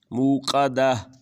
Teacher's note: قاف کی آواز گلے سے